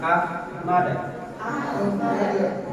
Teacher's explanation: yang Hamas ini juga dia punya sifat rohaa dilonggarkan coba AHM ha itu enggak ada tekanan sehingga udara keluar saja · Ha itu gak ada tekanan sehingga udara keluar saja. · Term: hamas dan rafawah